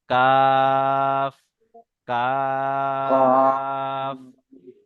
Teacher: জিভের গড়া ছেড়ে একটু উপরের ভাগ, একটু উপরের ভাগ, পুরো মাঝখানে নয়, জিভের গড়া ছেড়ে একটু উপরের ভাগ এবং সেই বরাবর উপরের তালু।